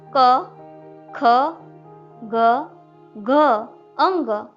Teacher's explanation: इन वर्णों का उच्चारण कंठ में से यानी गले में से होता है, इसलिए कंठ व्यंजन कहलाते हैं।